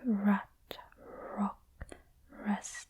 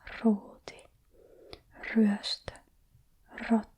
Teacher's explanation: The English R is very soft, like rat, rock, rest, while as the Finnish R really rolls off the tongue quite aggressively, like ruuti, ryöstö, rotta.